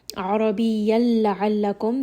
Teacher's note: عربيا لعلكم, this is going to be idgham without ghunna. We are going to merge the noon sakin with the next letter, which is lam. لعلكم, Ain again is going to be from the middle of the throat.